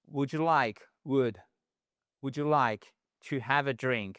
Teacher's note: Drink. Ici, c'est un ou court et on ne prononce pas le L